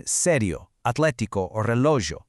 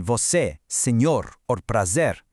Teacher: An open e sounds bright and wide, like in sério, atlético, or relógio. But a closed e is tighter, it's shorter, like in você, senhor, or prazer.